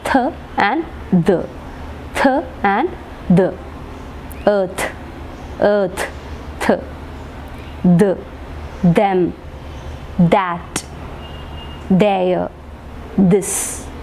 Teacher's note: the tip of the tongue, it is touching the upper teeth and then produce the sounds th and the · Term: dental sounds